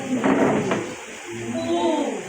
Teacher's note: the long U is close, back, rounded, and tense